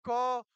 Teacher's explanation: क वर्ग का क्या होता है? उच्चारण स्थान कंठ होता है।